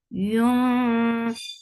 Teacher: As you will touch ikhfa, your lips should be in a straight position. Your tongue should be very close to the makhraj of dal, and you are keeping the sound and the gunna into your nose